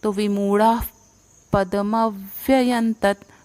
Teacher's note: विसर्ग है उसका उच्चारण भी फ जैसा आएगा, मतलब पूरी सांस बाहर निकालनी है क्योंकि अगला वर्ण प है। तो विमूढ़ा पदमव्ययंतत, म के ऊपर आघात, तो अगला वर्ण जोड़ के पदमव्ययंतत।